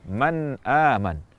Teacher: pengucapan kata Man aman adalah dengan jelas tanpa tambahan kadar gunah tanpa dipantulkan tanpa dihentikan dan juga tanpa menghilangkan gunahnya Man aman atau tanwin bertemu Hamzah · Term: izhar